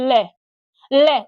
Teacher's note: और जीभ क्या करती है, हमारे मसूड़े को छूती है, ले ले, उच्चारण करो, जीभ एकदम किसको छुएगी, आपके मसूड़े को छुएगी, और जो हवा है वो किससे निकलेगी, आपके मुख के बगल से निकलेगी। उच्चारण करो, ले ले, जीभ एकदम ऊपर उठी, आपके मसूड़े को स्पर्श किया, और जो अगल बगल का जो भाग है वो हवा है वो उससे बाहर क्या करती है, निकलती है। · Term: पार्श्विक व्यंजन